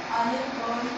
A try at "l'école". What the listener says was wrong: Non, il n'y a pas A.